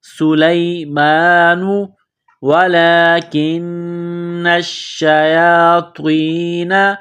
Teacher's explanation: لام کے اوپر کڑا زبر ہے، ایک الف کے لمٹ میں کھینچنا ہے